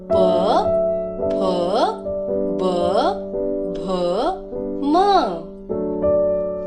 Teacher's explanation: इन वर्ग के उच्चारणों के लिए ध्वनि दोनों होठों को टकराकर या स्पर्श करने से निकलती है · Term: ओष्ठ ध्वनियां